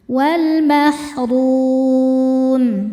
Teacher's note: maka rnya panjang boleh dua atau empat atau enam harakat asal konsisten dalam sekali duduk wal Mahrum wafi fi jika berhenti hukumnya mad thobi'i. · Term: mad arid lukun